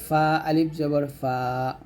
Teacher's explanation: ফা টা উপরে দুই দাঁত নিচে ঠোঁটের পেটে লাগিয়ে উচ্চারণ করবেন ফা আলিফ জবর ফা তো এই মাদের উচ্চারণ কিন্তু হরকতের মতই